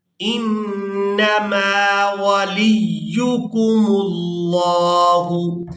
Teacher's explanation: انما نون مشدد پر غنہ کریں گے